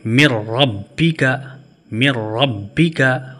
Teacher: لام اور را بغیر غنہ کے پڑھیں گے، جیسے مر ربی کا، مر ربی کا، یہاں پہ غنہ نہیں ہوگا۔